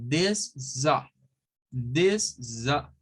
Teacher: la C se pierde. O sea, la C no suena. Y se une esta S a un schwa.